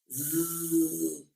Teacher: vai dar uma cócegazinha também entre a ponta da língua e os alvéolos, que é onde é o ponto de articulação, onde elas são produzidas. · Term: fricativa